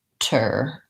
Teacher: syllables we may have an in sound or another schwa sound the most important thing is that it's very short and a reduced vowel not a clear vowel